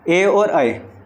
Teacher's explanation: यानी इन दोनों को क्या बोलते हैं हम कंठ तालव्य बोलते हैं